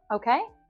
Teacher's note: This tag question at the end, okay, is a rise in intonation there.